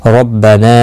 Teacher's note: را زبر کی وجہ سے پر پڑھا جائے گا، نا الف مدہ ہے، 1 الف کی مقدار کے برابر کھینچ کر پڑھیں گے وقف کی صورت میں بھی اور ملانے کی صورت میں بھی۔